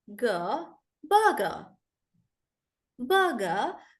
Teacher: in British English they generally don't pronounce the r